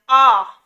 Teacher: जिन स्वरों के उच्चारण में मुह पूरा खुलता है उन्हें हम विवत कहते हैं जब हम आ बोलते आ तो हमारा मुह पूरा खुलता है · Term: विवृत स्वर